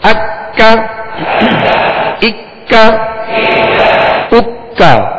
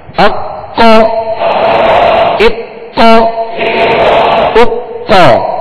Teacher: اکا. یہ ڈنڈی والا کاف ہے، لہذا اس کو باریک پڑھنا ہے، اور دو نقطے والے قاف کو پر یعنی موٹا پڑھنا ہے